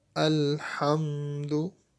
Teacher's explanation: Ha letter we say from the middle part of the throat.